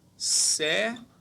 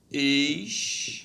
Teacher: todas elas têm como a sílaba tônica a penúltima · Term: paroxítonas